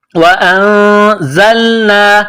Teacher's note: علیکم الغمام وانزلنا حمزہ کو نون کے ساتھ پلس کرنا ہے نون ساکن کے بعد زا ہے حروف اخفا ہے تو غنہ کریں گے آواز ناک میں چھپائیں گے